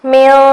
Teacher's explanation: نون کی آواز کو ناک میں چھپائیں گے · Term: اخفا